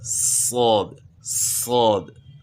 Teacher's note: اسی سین کی آواز کو آپ موٹا کریں، زبان تالو کی طرف اٹھے گی تو صاد بن جائے گا